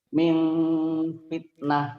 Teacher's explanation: ada bibirnya agak rapat gitu Pak, tapi nggak rapat banget, gitu. Ada bunyi m tapi eng gitu. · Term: Ikhfa